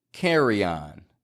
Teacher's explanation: carry on can release that Y sound, yan, to connect your speech seamlessly.